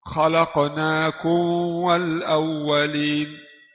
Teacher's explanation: Jadi tidak tidak rapat dua bibir di mim. Khalaqnak langsung masuk di wau.